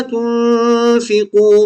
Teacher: تنفقوا کی نون ساکن کے بعد فا آ رہی ہے اس لیے یہاں اخفا ہوگا